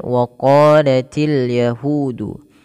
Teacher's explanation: untuk huruf qaf sendiri, tebalkan dia sambil kita buka rongga mulut kita karena untuk itmamul harakat, untuk menyempurnakan daripada membunyikan fathah.